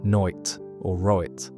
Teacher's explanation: The vowel in words like night and right is pronounced as a diphthong closer to noit or roit